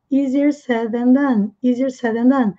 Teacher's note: o TH aqui ele tem som de Z com a pontinha da língua presa entre os dentes